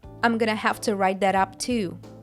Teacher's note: T at the end of that becomes a flap T before the vowel up